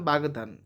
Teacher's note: এখানে ঘোষ ধ্বনি দ এর প্রভাবে ক হয়েছে গ